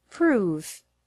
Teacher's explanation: the word improve has the stress on the second syllable